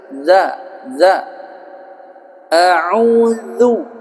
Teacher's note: Auzu huruf zal dia makhrajnya ujung lidah bertemu dengan ujung gigi sehari atas.